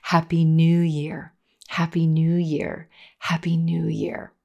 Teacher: the word new is our Focus word in this phrase and we spend the longest time on that blue moon vowel